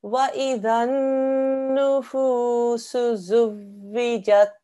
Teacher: here we have a noon mushaddad, and you should also do a gunna sound for 2 seconds here as well. The timing on this noon gunna, okay, should be 2 seconds, and it should be the same timing as with the mud.